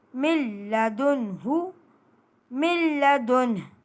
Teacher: نون ساکن کے بعد حروف لام آ گیا مشدد، ہم نے کیا کرنا ہے، نون ساکن کی تنوین کا غنہ ختم کر کے میم کو لام سے ملا دینا ہے اور نون ساکن کو ختم کر دینا ہے، یعنی نون ساکن کو حذف کر کے ہم نے ڈائریکٹ میم کو مشدد لام سے ملا کر پڑھنا ہے، اور لام میں سختی اور جمع لازمی ہے۔ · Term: ادغام لام